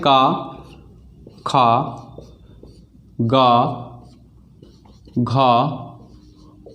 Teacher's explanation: का वर्ग कंठ से बोला जाता है